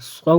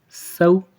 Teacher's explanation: صاد کو موٹا کرنا ہے